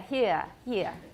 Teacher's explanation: we have a number of extra diphthongs in british because they've dropped the r